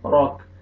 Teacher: را کو موٹا کر کے پڑھیں گے، کاف ساکن ہو جائے گا جب سٹاپ کریں گے، را زبر کاف جیسا راک.